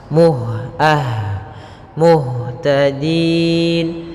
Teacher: sifat hamasnya ada mengalirnya nafas